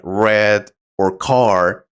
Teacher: pronounce certain sounds like the r sound which can be tricky in American English the r is pronounced strongly with a tongue curled slightly back